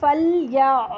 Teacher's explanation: आइन की आवाज़ झटके से रोकेंगे नहीं, आइन की आवाज़ चलती है, हमज़ा जैसी नहीं होती है। हमज़ा पे जब जज़म आता है तो हमज़ा की आवाज़ झटके से स्टॉप हो जाती है, पीछे से हम ज़बर को स्टॉप करते हैं।